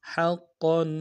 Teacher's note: حقا قاف کے اوپر شد ہے، تنوین غنہ کریں گے، شد میں زور دیں گے